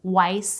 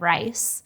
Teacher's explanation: They may substitute one sound for another, for example, swapping the W sound for an R sound and saying wice instead of rice